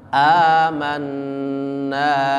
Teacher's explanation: A panjang. Kemudian nun ditasydid berarti ditekan yang lama